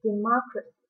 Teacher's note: when the word is a noun democracy the stress is on the second syllable